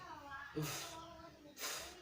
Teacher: To produce that sound is place your the top teeth firmly on the inside of the bottom lips. Release the air continuously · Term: The sound F